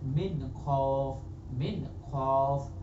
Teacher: অনুরূপ ভাবে যেখানে গুন্না করে পড়তে হবে সেটাকে ইখফা বলে। গোপন করে পড়া মানে নুনটাকে আপনি গোপন করে নেবেন আর তার আওয়াজটাকে আপনি জাহির করবেন নাকের মাধ্যমে